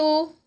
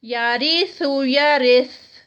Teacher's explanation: را موٹا نہیں ہوگا، باریک ہوگا